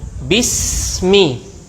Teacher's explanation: Jadi saat kita menyebut sin, suaranya tidak terputus sampai mim. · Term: huruf rokhawah